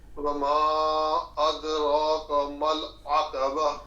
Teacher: مل عقب، عین کی آواز کو صحیح نکالنا ہے۔ عین حلق کے درمیان والے حصے، گلے کے بیچ میں سے نکلتا ہے جہاں سے ہا نکلتا ہے۔